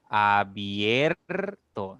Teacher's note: La I es cerrada, la E es abierta, por lo tanto, al pronunciar esta palabra permite que tu boca se abra un poquito más entre la I y la E. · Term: diptongo creciente